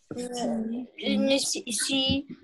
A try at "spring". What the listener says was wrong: Нет, не си, уже ошибочка, это не си буква, ребят.